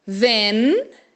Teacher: O N vai tocar lá o céu da boca.